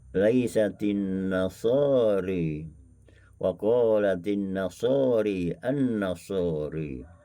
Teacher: Apabila bertemu dengan zilro, maka membaca dengan imalah.